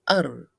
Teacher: Only one trill is needed to produce its sound